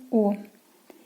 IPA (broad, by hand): ɔ: